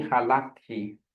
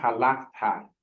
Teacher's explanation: for the accent, usually it's in the second syllable, okay, for the first and second person